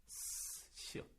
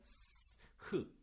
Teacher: 이렇게 소리가 나는데 마찰이 되면서 살짝만 방해를 받는 거. 그거를 마찰음이라고 해요.